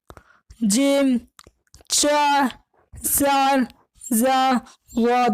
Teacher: جو حروف تالو سے بولے جاتے ہیں ان کو حرف خنقی کہتے ہیں۔ ایسے حروف جو تالو سے اس کی مخرج کی ادائیگی ہوتی ہے، ایسے حروف جس کی آواز تالو سے نکلتی ہے ویسے حروف کے حرف خنقی کہتے ہیں، جیسے جیم، چا، زال، زا، غاد وغیرہ۔